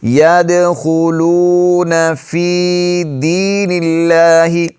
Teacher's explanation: لفظ اللہ کا جو لام ہے یہ باریک پڑھا جائے گا کیونکہ اس سے پہلے والے حرف کے نیچے زیر ہے